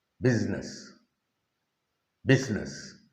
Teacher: Busyness. The S takes a kind of an Z sound. Busyness. Business.